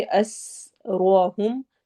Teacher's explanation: سین میں سیٹی والی آواز ہوگی